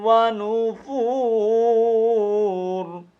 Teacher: یہ را ساکن ہوگی، اور جب را ساکن ہوگی تو اس وقت را کو پر کر کے پڑھیں گے